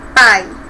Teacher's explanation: O A é mais forte, nós temos aí um tom e depois cai um pouquinho o semitom, que é o I. Pai, ok? Então, A, vogal, I, semivogal, tá bom?